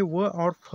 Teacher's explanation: दंत्योष्ठ्य निचले ओठ और ऊपरी दांतों से